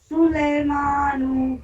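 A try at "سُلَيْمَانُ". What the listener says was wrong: سو لے نہیں. دیکھیے یہی مجہول ہے جو لے بولتی ہے نا یہی مجہول ہے. سلیمانو سلیمانو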